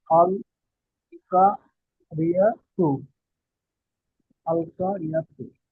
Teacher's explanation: র এর নিচে জের এসেছে তাই র কে বারিক করে পড়তে হবে